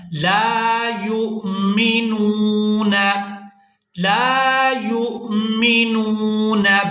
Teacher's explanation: اس کے بعد یا کو ہم نے حمزہ ساکن کے ساتھ ملانا ہے، واو یہاں پر سائلنٹ ہی رہے گی۔ یا کو جب ہم حمزہ ساکن کے ساتھ ملائیں گے تو جھٹکے کے ساتھ ادا کریں گے، یا حمزہ پیش یو۔